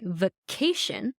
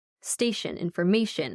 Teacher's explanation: So if you have a word like vacation, you're emphasizing on that A right before the shin